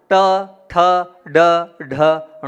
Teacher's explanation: जीभ को जब आप पीछे ले जाएंगे वहां से ण का उच्चारण होगा